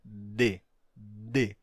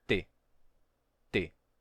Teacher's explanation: uma em português a diferença de T para D é que o d é sonoro e o t não no D temos vibração das cordas vocais